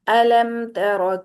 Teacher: अलम तर जल्दी से पढ़ दिया मीम को अदा किया और साथ ही ता को पकड़ लिया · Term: इजहार शफवी